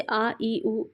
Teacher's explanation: इन स्वरों के उच्चारण में ह्रस्व से 2 गुना समय लगता है। ठीक है, तो उनको दीर्घ स्वर कहा जाता है ना।